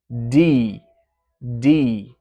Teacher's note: Tongue tip up to the gum ridge for the D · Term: voiced plosive